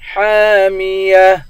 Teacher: ہا کے بعد الف ہے، الف حروف مدہ ہے، اس کو ایک الف کے مقدار کھینچ کر پڑھیں گے